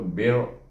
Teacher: kita sukunkan bunyinya bir, dan baca ra dengan tebal